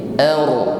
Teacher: Jadi huruf ra di sini, ra sukun kita tebalkan bunyinya. ar, bukan sekedar bergetar.